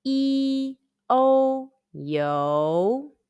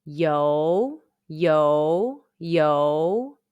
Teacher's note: When the final yo is not following an initial or consonant, it is spelled as Y-O-U and pronounced yo. Let's combine the final yo and the high rising second tone, the question tone, all together.